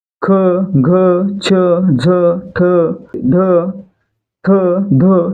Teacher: ख छ झ ठ ढ थ ध हे काय आहेत महाप्राण आहेत कारण यांचा उच्चार करताना काय होतं आपल्या तोंडातून ह चा उच्चार देखील आपसुक होतो